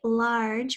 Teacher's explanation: we hear the R in the middle, and then we hear the J, which is a soft G sound